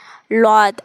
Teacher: இது மேல் கடவாய்ப்பல்ல நாக்கோட ஸ்டார்டிங்கை வச்சு லாத் அப்படின்னு ஓதணும்.